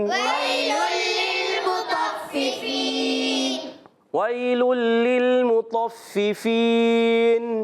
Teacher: یہاں پر تنوین کے بعد لام آ رہا ہے، ادغام بلا غنہ ہوگا